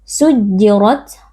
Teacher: kita baca tebal dengan mengangkat pangkal lidah sujjirat ro ro tafkhim karena kita di sini rnya berharakat fathah